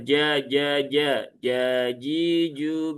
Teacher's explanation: Kalau ta itu punya hames, kalau jim dia enggak punya hames. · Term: huruf jim